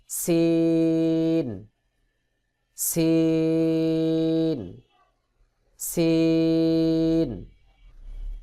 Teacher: তারপরে রয়েছে সিন ঝা এবং সিন একই জায়গা থেকে উচ্চারণ হবে জিহ্বার আগা সামনের নিচের দুই দাঁতের পেট ও আগার সঙ্গে লাগাইয়া সিন উচ্চারণ হবে